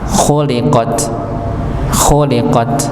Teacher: Jadi dibaca tak ya, khuliqat, khuliqat ya, bukan khuliqah misalnya, tapi khuliqat nggih, maka dibaca huruf ta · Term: tak maftuhah